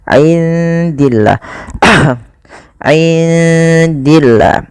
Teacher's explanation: Kemudian pada lafal indillah, indi di sini ada bacaan ikhfa, maka suara nunnya samarkan kepada huruf dal.